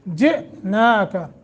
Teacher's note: حمزہ ساکن ہے جھٹکا دے کے پڑھیں گے